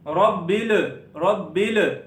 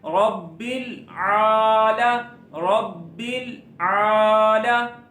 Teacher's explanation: لام کے اوپر نہ کلکلہ نہیں کرنا